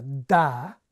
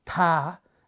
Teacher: So when I say the difference between, say, a ta and a da, the big difference between those two sounds is not where they're made in the mouth, but actually the fact that my voice box switches on and starts buzzing a bit earlier in da than in ta